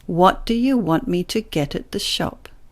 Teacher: these little words are not stressed they're often said faster and at a lower volume than the stress syllables and that means that the vow sounds lose their purity so